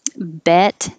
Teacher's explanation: The vowel is e, as in head. The jaw is more closed. And the vowel is a little shorter because the last consonant in the word is T.